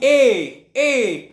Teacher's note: तो कंठ तालब्य से बोला जाएगा